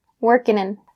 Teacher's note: we'll drop that g in working